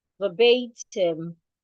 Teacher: You're stressing the bay.